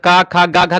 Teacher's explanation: का खा गा घा का उच्चारण कंठ से होता है, आ का उच्चारण कंठ से होता है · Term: कंठ ध्वनि